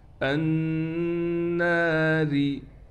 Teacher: حمزہ کو ہم نون سے ملائیں گے، نون پر غنہ کیا جائے گا تشدید ہونے کی وجہ سے۔